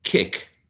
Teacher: this interruption of the flow of the air is caused by the back of the tongue being pressed against the soft palate or alveolar Ridge right and sorry the soft palate or vilem